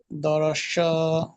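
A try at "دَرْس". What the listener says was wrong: সা বলছেন কেন? এটা তো সিন, সা দারাসা। দারাসা। এটা সা নয়, সিন। সিন জাবার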